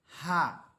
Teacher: এই হা টা স্বাভাবিকভাবে উচ্চারিত হবে হা মুখের খালি জায়গা থেকে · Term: গোল হা